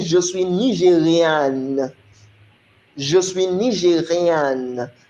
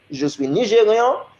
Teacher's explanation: You would pronounce the last N as a feminine. But as a masculine, you won't pronounce the N.